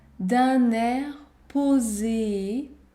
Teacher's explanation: la liaison est obligatoire, d'un air posé, sérieux.